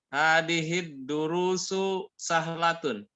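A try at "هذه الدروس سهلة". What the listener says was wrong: Nah, itu mantap.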